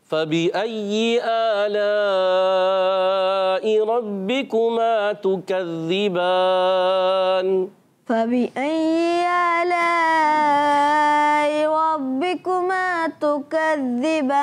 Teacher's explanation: और हमज़ा की अदायगी क्लियर रखनी है, तहकीक से अदा करना है।